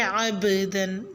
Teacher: آیت نمبر 10 میں عبدن میں با ساکن پہ قلقلہ کریں گے۔ عبدن با کو ہلا کے پڑھنا ہے، یعنی کہ قلقلہ جنبش کی آواز کے ساتھ، اس طرح کہ آواز ٹکرا کے واپس آئے